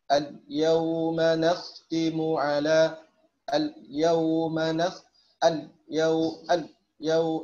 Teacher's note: Ini kayak lamnya diucapkan dalam 2/3, ya, atau enggak sampai 3/3, ya, enggak sampai penuh lamnya diucapkan. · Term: ikhtilas